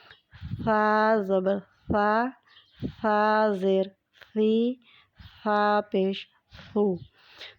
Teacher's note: ثا جو حرف ہے اس کو ہم نے دونوں اوپر اور نیچے کے دانتوں کے درمیان زبان کو رکھ کے تو ہم نے ادا کیا ہے